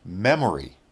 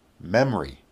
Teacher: memory is three syllables now with the Ellipsis memory that's two syllables